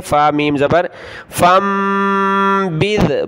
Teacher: وَإِمَّا تخافن من قوم خیانتا، تا کے اوپر دو زبر تنوین کلرفل ناک میں آواز پیدا کریں گے، خیانتا فانبذ، دیکھیں نون ساکن ہے، اس کے بعد با ہے تو چھوٹی میم آ گئی، فا کو چھوٹی میم کے ساتھ ملا کر ناک میں آواز پیدا کریں گے